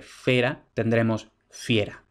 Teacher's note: de una E breve vamos a tener, en castellano insisto, el diptongo ie.